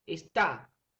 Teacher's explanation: De estas dos sílaba, la más fuerte sería ta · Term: sílaba tónica